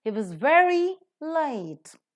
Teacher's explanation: If you look into the words, he being a pronoun is not stressed, was being a helping verb is not stressed, very is an adverb, hence it is stressed, and late is an adjective, hence it is stressed. So only very and late are stressed, the rest are reduced to their weak forms.